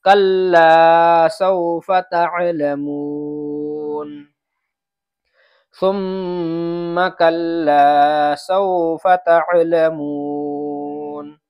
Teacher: سوفا کے فا کو نہیں کھینچنا ہے۔ اس لیے کلا کو تو کھینچیں گے، سوفا کو نہیں کھینچیں گے۔